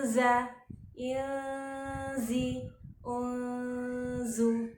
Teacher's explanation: Setiap ada nun sukun atau tanwin bertemu dengan huruf 15 termasuk huruf za. Jadi kita ketika mengucapkan hurufnya harus dibaca samar, tetapi ini adalah samar tipis karena za itu memakai rahang tipis, tarkik. Berarti jangan dimonyongkan, jangan ditebalkan dan jangan di rahang tebal, tapi rahangnya rahang tipis. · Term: ikhfa hakiki